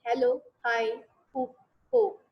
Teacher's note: the glottal consonant is not produced with the tongue or lip but produced with the throat